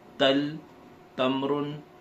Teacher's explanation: यह एक साफ बारीक और हर का हरफ है। इसे मोटा या भारी नहीं पढ़ा जाता है। हरफ ता का मखरज जबान की नोक और ऊपर वाले दांतों के जड़ जड़ यानी पीछे पीछे वाला हिस्सा।